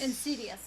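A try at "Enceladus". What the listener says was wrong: Well, how come you're not saying the L?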